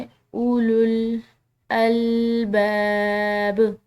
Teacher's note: با کے بعد جو یہ الف مد آ رہی ہے، اس کی وجہ سے ہم نے با کو لمبا ادا کیا ہے